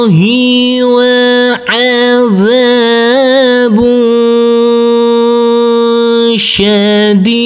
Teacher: Huruf dal kita pantulkan karena ini adalah bacaan qalqalah